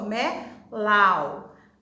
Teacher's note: O A, ele tá com o som somente oral, o som saindo só da boca.